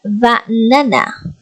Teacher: The stress is on the second syllable.